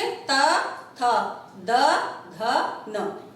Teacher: जीभ हमारे दांतों को टच कर रही है, इसलिए इन्हें कहा जाता है दंत्य